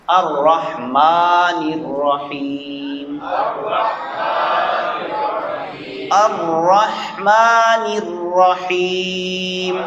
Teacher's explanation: میم کی آواز ناک میں نہیں جانی چاہیے